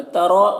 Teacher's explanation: ترا، را کے اوپر زبر ہے، را کو پر پڑھیں گے اور یہ جو مد ہے مد متصل ہے، اسے 3 سے 4 الف برابر کھینچ کر پڑھتے ہیں